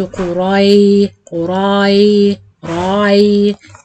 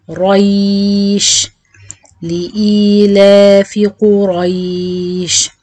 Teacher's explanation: قاف ضمة قو، را فتحة را، ياء مد لين جائز، اثنان أو أربع أو ست حركات، شين ساكنة عند الوقف. قريش، أراعي تفخيم القاف والراء وأبدأ المد بعد الراء، ما أعملش مد للراء، ما أقولش قراي قراي راي.